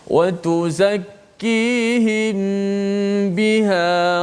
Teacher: Kita rapatkan kedua-dua bibir kita, dan seperti biasa hukum ikhfa syafawi ni kita kena panjangkan gunnah kita. Kalau baca lambat, bacaannya kiraan gunnah itu dilambatkan sedikitlah.